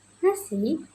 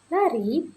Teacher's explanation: bunyi dental alveoler yang berarti posisi lidah yang berada di belakang gigi atas. dan gusi atas sehingga udara dapat mengalir dengan celah lidah dan gigi.